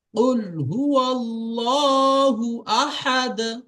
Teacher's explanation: দালের উপরে যখন সাকিন হবে তখন দালের আওয়াজটা ফিরে আসবে। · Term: কলকলা